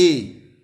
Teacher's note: जब हम ए बोलते हैं तो कंठ से, और हमारी जो जीभ है वो तालू में लगती है ए, तो हमारा कंठ तालव्य हो जाएगा।